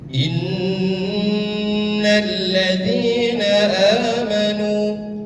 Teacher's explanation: Jadi jangan langsung innalladzi tapi ditahan dua ketukan. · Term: gunah